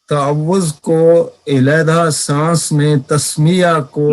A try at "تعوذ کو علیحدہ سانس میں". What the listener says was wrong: نہیں، ایسے نہیں، ایسے نہیں. تعوذ کو علیحدہ سانس میں، یہاں پر سانس کو علیحدہ کریں نا.